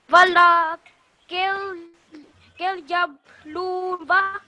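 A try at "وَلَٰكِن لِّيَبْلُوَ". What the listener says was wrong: So which stroke this lam mushaddad have? You missed it. Yeah, just 1 second to this lu. Walakin liyabluwa.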